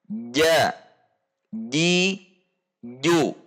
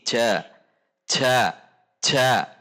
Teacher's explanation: menekan tengah lidah ke langit-langit tengah dengan tidak mendorong udara. Di sini kesalahan yang biasa terjadi adalah mendorongnya itu ke depan, sehingga berbunyi ja, ja, didorong ke depan. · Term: huruf jim